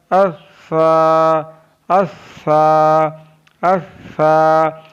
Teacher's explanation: ज़बान का सीरा और ऊपर के दांतों के अंदरूनी किनारे से अदा होता है